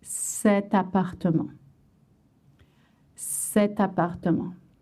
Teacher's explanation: you want to voice an extra T sound to link the two words together